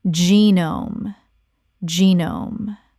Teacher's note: Two syllables. The G makes a J sound and the E is long.